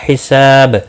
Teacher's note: حساب سا الف مدہ ہے، ایک الف کے برابر کھینچ کر پڑھیں گے، اور وقف کی صورت میں با ساکن پڑھا جائے گا، اس پر قلقلہ بھی ہوگا